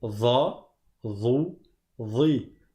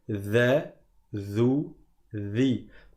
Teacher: la lettre dha, c'est comme le dhal, sauf que la langue à l'arrière, elle monte.